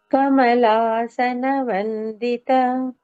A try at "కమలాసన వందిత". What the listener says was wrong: కమ ఎక్కడ start అవుతుంది? ముందే స్టార్ట్ అయిపోవాలి. కమలాసన వందిత. మొత్తం పాట అంతా కూడా ప్రతి లైన్లోని అతీతం ముందుకు తక్క వస్తుంటుంది. సో పాడేసి అప్పుడు ఫస్ట్ బీట్ స్టార్ట్ చేయండి.